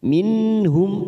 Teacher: nun sukun bertemu ha Idhar halki kita baca jelas tanpa mendengung